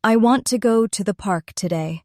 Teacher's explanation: Do you hear how want and park are strong? The other words are softer. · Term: natural rhythm and stress